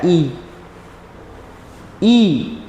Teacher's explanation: जैसे ई में हमारा मुंह बहुत कम खुलता है।